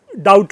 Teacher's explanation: English में DOUBT में जो है बी साइलेंट हो जाता है, और डाउट हो जाता है। वो हम उसे डाउट नहीं बोल सकते क्योंकि वहां पर साइलेंट प्रक्रिया है।